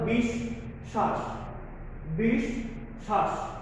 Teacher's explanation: তোমরা ইতিপূর্বে ক্লাসে বুঝিয়ে ফেলেছো, দ্বিত্ব মানে দুইবার উচ্চারণ করতে হয়। যে ব্যঞ্জনের সাথে যুক্ত হবে বফলাটা, ওই ব্যঞ্জনটাকে আমরা দুইবার উচ্চারণ করব,